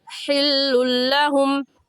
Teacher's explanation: लाम मुशद्दद और वा मुशद्दद पर गुन्ना नहीं होता, इस वजह से हम यहाँ पर गुन्ना नहीं करेंगे, जल्दी से पढ़ जाएंगे।